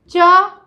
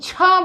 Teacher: छ बोलिए, देखिए आपको श्वास ज़्यादा निकल रहा है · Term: महाप्राण